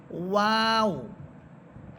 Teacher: ওয়াও হরফটা অবশ্যই ঠোঁট গোল করে বলবেন